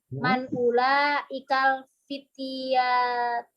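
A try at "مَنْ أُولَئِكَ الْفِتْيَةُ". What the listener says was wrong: Ahsanti.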